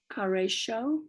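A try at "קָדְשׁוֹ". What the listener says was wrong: That's not a resh. Kadesho.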